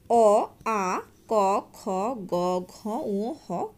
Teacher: যেসব ধ্বনির উচ্চারণ স্থান কণ্ঠনালীর উপরিভাগ বা জীবামূল তাদের কণ্ঠধ্বনি বলে